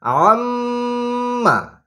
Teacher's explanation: আছি নাকের ভিতরে এটাই হচ্ছে গুন্না আর প্রতিটা গুন্নায় স্মরণ রাখবেন প্রতিটা গুন্নায় এক আলিফ পরিমাণ গুন্না করে রাখতে হয় অর্থাৎ গুন্নাটা নাকের মধ্যে ধরে রাখতে হয়